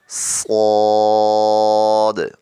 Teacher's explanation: سین، شین، صاد، اب اس کو ہم سواد نہیں پڑھیں گے، سواد پڑھیں گے تو اس میں واو پڑھا جائے گا، سیدھا سیدھا پڑھنا ہے، ہونٹوں کو گول نہیں کرنا